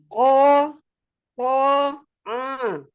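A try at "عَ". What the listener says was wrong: Jangan masuk ke hidung. Dibuka tenggorokannya. Ko, ko, a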